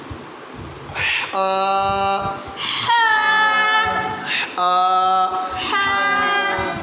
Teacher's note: ہا جو ہے یہ حلق سے ادا ہوگی بیٹا، بڑی احتیاط کرنی ہے، ہا جو ہے اس میں اکثر تلفظ میں غلطی کی جاتی ہے۔